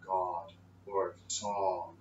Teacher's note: we pronounce God, we have this roundness to the sound, God, or song. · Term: the God vowel